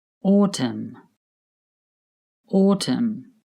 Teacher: The letter N at the end of autumn is not pronounced. It is silent.